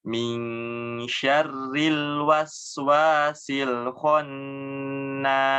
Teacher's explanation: Karena keadaannya nunnya yang bertasydid. Jadi harus ditahan dulu. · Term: nun tasydidnya